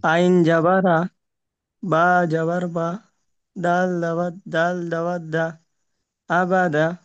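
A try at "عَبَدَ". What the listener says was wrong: তবে অক্ষরটা টান দেবেন, আইন জাবার আ, বা জাবার বা, আবা, দাল জাবার দা, আবাদা। আইনের উপরে জাবার, জাবারটি হলো হারাকাত, হারাকাতের পড়াকে তাড়াতাড়ি পড়তে হয়, টান দেওয়া নিষেধ।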